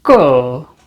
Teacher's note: So when it's used in beginning of a word, it will be a k with the falling tone. So falling tone is the one which starts from upper frequency and goes to low.